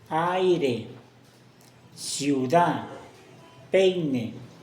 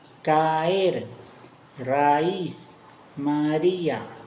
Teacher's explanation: Un solo golpe de voz en el diptongo, en el hiato son dos golpes de voz separados.